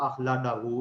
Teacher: Indonesian جو لوگ ہیں وہ ڈال پڑھ دیتے ہیں، اس کو اخلاڈاہو اس طرح سے پڑھ دیتے ہیں. افریقن جو ہے وہ تھوڑا سا اس کو پھر دال سے اور ڈال سے درمیان سی ساؤنڈ ادا کرتے ہیں.